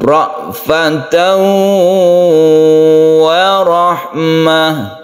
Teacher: itu idgham artinya masuk kemudian bighunna dengan dengung jadi di sini kita masukkan tanwin tersebut ke wau sehingga kita dengungkan dipanjangkan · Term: idgham bi gunnah